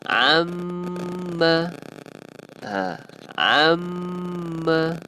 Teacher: bila mana huruf mim yang bertanda sabdu, kita kena tekankan, dia akan menjadi wajibul gunnah. Maksudnya kita wajib dengung. Dia akan bacanya amma yatasa.